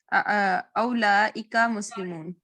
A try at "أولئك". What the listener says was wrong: उलाइका पेश है, उलाइका।